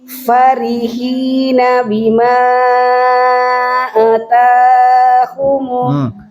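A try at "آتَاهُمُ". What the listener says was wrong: Bima ata-nya panjang. Ata.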